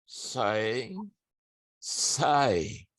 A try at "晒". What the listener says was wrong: Oke, bunyinya sudah benar, cuma nadanya ya Pak. Nada itu nada satu, jadi caranya gini. Sai. Jangan turun Pak.